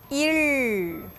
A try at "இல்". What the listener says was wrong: இன்னும் அழுத்தமா சொல்லணும்.